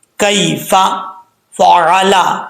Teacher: ऊपर वाले जो दो दांत हैं उनका किनारा नीचे वाले होंठ की तरी वाली जगह पे लगे तो फा पढ़ा जाता है